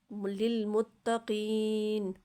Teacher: اچھا، ھدی للمتقین، ھدی للمتقین، یا پھر ساکن ہے، اس سے پہلے زیر ہے، تو لہٰذا یہ بھی یائے مدہ ہے، تھوڑا سا قاف یا زیر قی کو تھوڑا سا کھینچ کے پڑھنا ہے